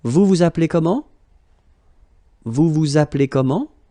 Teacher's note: Vous vous appelez comment? Remember, as usual, raise a little bit your voice at the end.